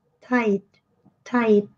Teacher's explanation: E com som I, e o T no final é bem sutil.